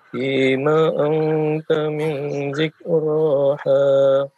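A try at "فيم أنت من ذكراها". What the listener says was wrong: Fima anta ikhfa'nya ditahan lagi 2 harakat.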